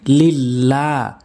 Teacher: লাম আপনি এক আলিফ টেনে পড়বেন